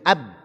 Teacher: Dia tertutup dengan rapat. Ab, makhrajnya tertutup dengan rapat, 2 bibirnya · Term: syiddah